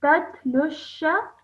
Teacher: You're reading really, really well, but when you're saying it all in one go, you mistakenly just elongate this for too long. It should just be sha at the end, okay? Not elongated more than that.